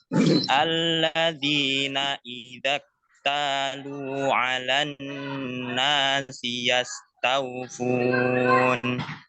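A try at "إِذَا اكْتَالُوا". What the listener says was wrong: Kaf sukunnya dijelaskan idzak talu. Belum terdengar ya apanya? Hamznya. Nah, begitu. Idzak talu.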